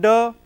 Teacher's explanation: It is voiced alveolar plosive